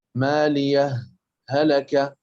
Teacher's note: والثاني الوصل مع السكت، بحيث نسكت سكتة يسيرة بمقدار حركتين على مالية دون تنفس